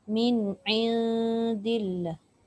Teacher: Min min tu tak dengung lah, tapi in tu kena dengung.